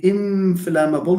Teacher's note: It's a labiodental nasal, which is rare in languages, but we do have it in English.